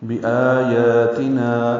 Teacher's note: آیا اور نا یہ بھی 2 حرکات لمبا کریں گے. مد اصلی ہیں، آ مد بدل، یا کھڑا زبر قائم مقام مد اصلی، نا الف مدہ مد اصلی.